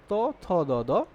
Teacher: জিহবাটা গিয়ে দাঁতের একদম গোড়ায় আঘাত করতেছে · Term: দন্তমূলীয়